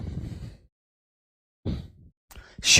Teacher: श जो बोला जाता है यह हमारा तालु से बोला जाता है